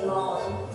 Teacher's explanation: for the French accent, you want to have these really forward, droopy lips, so they kind of go these droopy lips that go like that, and then they have that R sound in the back of their mouth.